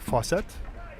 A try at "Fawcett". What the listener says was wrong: It's Fawcett. He's not French. It's Fawcett, yes.